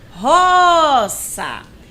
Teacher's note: Eu me prolonguei mais no ró. Então, ela é a sílaba tônica dessa palavrinha. · a sílaba mais forte é a penúltima sílaba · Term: paroxítona